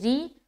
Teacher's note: रा के नीचे ज़ेर है तो इस सूरत हाल में रा बारीक होगी